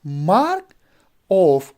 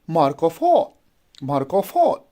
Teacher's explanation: And then we have another, that is mark of. Mark is unstressed, of is unstressed, and all would be a stressed one.